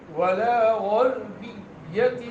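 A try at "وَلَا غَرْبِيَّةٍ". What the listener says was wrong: را باریک ہو گیا، را موٹا کریں،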